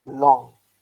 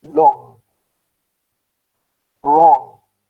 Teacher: when they come at the end of the word we do not pronounce the g sound